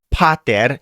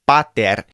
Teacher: If you wanted to say pater, it's not pater, it's bater. It's almost between the B and the P sound. It's not a big puff of air behind